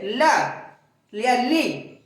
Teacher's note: ल जीभ कहां लग रही है दांतों में लग रही है अर्थात वायु दांतो से हो के गुजर रही है इसलिए उन इन वर्णों का स्थान जो है दंतपना जो इतने वर्ण है तो फिर से देख लीजिए ये देख लीजिए दूसरे का तीसरे का देखिए दूसरे का हो गया था क्या लिखा हुआ?